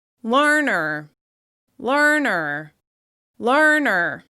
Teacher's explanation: that first syllable is stressed. The second syllable is reduced. It's less obvious. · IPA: /ɝ/